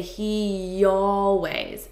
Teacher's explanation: Notice that there's a slight Y. We use this Y sound to connect two vowels. So I have a vowel here and a vowel here.